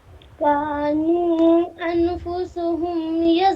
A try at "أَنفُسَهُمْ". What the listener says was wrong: ہاں اخفا کیجیے كانوا أنفسهم، فسهم نہیں ہے، أنفسهم زبر ہے سین پہ.